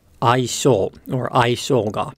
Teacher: the pitch starts low, rises, drops on the 性, and then stays low through the particle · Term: pitch accent pattern